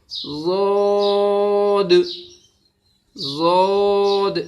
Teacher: زبان کی کروٹ اوپر والے داڑھوں کی جڑ میں لگے گی. اندری جڑ جو ہوتی ہیں اس میں کروٹ ایک سائڈ سے، دونوں طرف سے نہیں، ایک طرف سے.